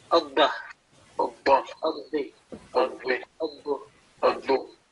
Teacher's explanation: You see, because in mushaddad letter, a letter having a tashdid, we have to pronounce it, giving double time or stressing, emphasizing, because it is a double letter